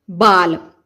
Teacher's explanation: ਹੈ। ਇਸ ਦੇ ਉਲਟ ਇਧਰ ਜਦੋਂ ਅਸੀਂ ਲਲਾ ਬੋਲਦੇ ਹਾਂ ਤਾਂ ਸਾਡੀ ਜੀਭ ਜਿਹੜੀ ਹੈ ਉਹ ਤਾਲੂ ਨਾਲ ਜਾ ਕੇ ਨਹੀਂ ਲੱਗਦੀ ਬਲਕਿ ਮਸੂੜਿਆਂ ਦੇ ਨਾਲ ਜਾ ਕੇ ਲੱਗਦੀ ਹੈ